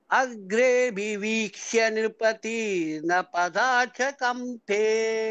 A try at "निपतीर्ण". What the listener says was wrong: निपतीर्ण इज दीर्घ बट निपतीर्ण only there.